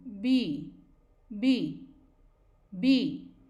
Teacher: आपने देखा कि हमारे दोनों लिप्स एकदम क्लोज आए और फिर उसके बाद एकदम से एयर रिलीज हुई। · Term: b sound